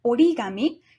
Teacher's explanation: the first consonant of the latter part of the word changes from voiceless to voiced